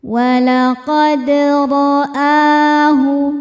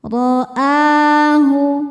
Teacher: Ro dibaca tafkhim karena berharokat fathah, maka ro-nya tebal.